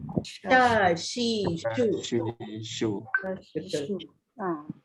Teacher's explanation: Huruf shin dia ada sifat hemburan. Jadi kita kena sebut dia dengan menghemburkan bunyi. Ada sh, ada bunyi macam sh.